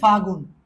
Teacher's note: ফাল্গুন ফাগুন, এখানে ল বাদ গিয়ে ফাগুন হয়েছে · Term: অন্তর্হতি